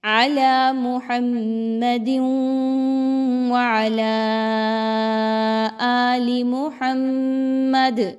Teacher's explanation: وقف کیا تو دال کو ہلا رہے ہیں کیونکہ دال حروف قلقلہ میں سے ہے